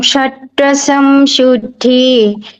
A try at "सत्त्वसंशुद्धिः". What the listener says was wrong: हाँ, बस शुद्धि ही करिएगा। हाँ, यहाँ पे विसर्ग है, शुद्धि ही।